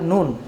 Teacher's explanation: 9 নম্বর মাখরাজ, জিহ্বার অগ্রভাগ তালুর সাথে লাগিয়ে উচ্চারিত হয় নুন।